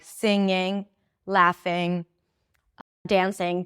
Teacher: So the ing doesn't really have a G sound at the end. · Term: ing suffix